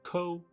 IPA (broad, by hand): koʊ